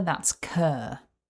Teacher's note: Syllable 1 starts with the unvoiced k sound. Then we have the long vowel Together that's cur.